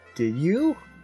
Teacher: It goes up on the U.